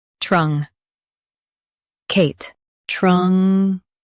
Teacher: Stress Kate and keep trung soft.